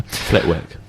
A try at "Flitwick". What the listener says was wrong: You don't pronounce the W, it's silent.